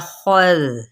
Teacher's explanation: خا کو پر کرتے ہوئے دال کو نرمی سے پڑھنا ہے